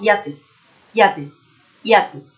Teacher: Tendríamos que pronunciar la de la J o Y de otra forma, como si fuese una I, como si fuese IA